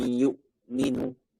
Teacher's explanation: suara gunnahnya itu berasal dari mana? Khaysyum. Dari rongga hidung. Bagian dalam rongga hidung.